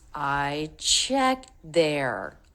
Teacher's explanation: so it's all smoothly connected and the stress is on the word checked